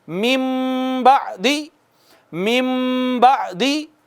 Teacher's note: تو دیکھیں، اب یہ اس کو پڑھنا تھا ہم نے من بعدی، من بعدی۔ اب من کی بجائے مم بعدی ہو جائے گا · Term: اقلاب